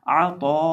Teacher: अब इस लफ्ज़ के अंदर देखिए हमारे पास आइन है, तो है, अलिफ है और हमजा है। आइन को हम हलक के दरमियान से ही अदा करेंगे।